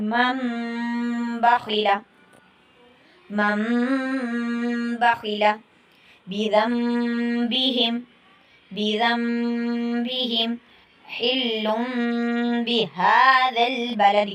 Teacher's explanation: حرف با آ جائے تو اس نون ساکین اور نون تنوین کی آواز کو میم سے بدل دیں گے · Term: اقلاب